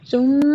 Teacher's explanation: سا جو ہے نا اس پر پیش ہے اور لیکن اس میں سیٹی نہیں آئے گی